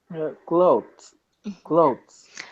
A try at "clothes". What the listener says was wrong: you were almost correct. So you're saying clothes, which has no vibration, no voicing. When you say it, you want your throat to vibrate. Clothes. Like the sound in the and the sound in zebra. Clothes.